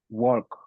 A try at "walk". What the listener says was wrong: Yo oigo L todavía ahí, solo como que si fuera walk.